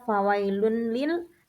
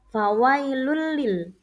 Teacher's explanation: Tidak dibaca fawailun lil, tapi dibaca fawailul lil. Lam pertama masuk ke bunyi lam kedua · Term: idgham bila gunnah